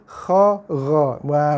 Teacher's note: huruf Kha dan huruf Gha kita baca dengan bunyi yang agak bulat